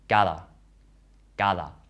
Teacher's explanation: But in other environments, the D is pronounced a bit like the voiced TH in the English word other.